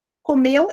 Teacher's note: a sílaba tônica é meu